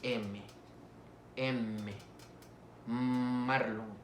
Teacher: están interviniendo los dos labios